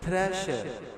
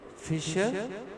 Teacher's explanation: Sha is voiceless, palatal fricatives.